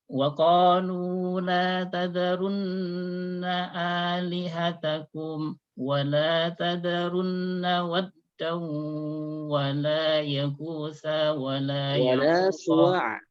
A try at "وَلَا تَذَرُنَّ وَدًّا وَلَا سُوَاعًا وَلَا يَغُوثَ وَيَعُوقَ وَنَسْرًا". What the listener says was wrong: Suwa'a dulu. Pertama wala tadharunna waddaw wala suwa'an wala yaghutha wa ya'uqa wa nasra. Yang dua terakhir tidak ada lamnya.